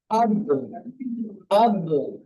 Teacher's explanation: এই কলকলা হরফকে কিভাবে উচ্চারণ করতে হয়? ধাক্কা দিয়ে উচ্চারণ করতে হয়।